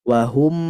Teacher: huruf mim sukun dia sifatnya tawassut maka ditekan macanya